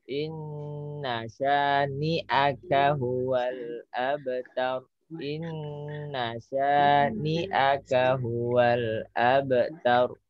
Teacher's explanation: Qalqalah ya, double mantul. Inna syani'aka, syani 2 ketuk saja.